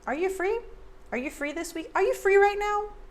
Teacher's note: A lot of times Americans reduce you to ya.